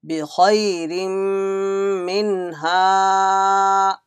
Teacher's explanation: ha came after Nun Sakin, there will be Izhar. There is no gunna here.